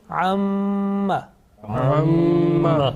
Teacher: Now you see that there is a sustained continuous nasal sound, okay, about 2 seconds. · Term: Meem Gunna